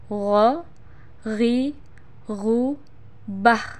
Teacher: Huruf ini keluar dari tenggorokan yang terdekat dari rongga mulut kita. Diucapkan dengan lembut suaranya tanpa mengalir udara. · Huruf gho termasuk salah satu huruf yang harus terdengar menebal suaranya. Caranya, pangkal lisan angkat ke belakang.